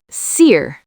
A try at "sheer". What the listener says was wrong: Your S sound is too soft. It sounds like C. You need to make a sh sound, like when you tell someone to be quiet. Shh. Sheer.